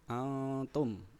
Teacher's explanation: nun sukun atau nun mati bertemu dengan ta nunnya dibaca samar dibaca samar berbunyi Antum itu dihukumi bacaan Ikhfa kemudian lihat di